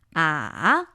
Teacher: the third tone is supposed to be a 2 1 4. Ah, so you actually finishes a little bit higher than it starts.